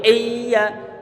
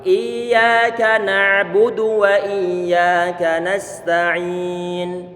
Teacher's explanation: huruf ya sifatnya dia adalah rikhawah, dibuat mengalir.